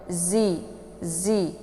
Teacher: Unzi, zi, posisi zai ini masih di ujung lidah. Dia memposisikan ujung lidah dengan urat gigi bagian bawah